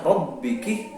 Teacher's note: itu roknya tafkhim karena berharakat fathah